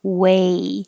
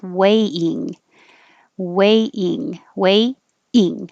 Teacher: When you say a, your tongue should rise and finish in the E position.